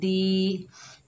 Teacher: दाल के नीचे जेर है, आगे या साकिन है, ये या मद्दा है, एक अलिफ की मिकदार खींच कर पढ़ेंगे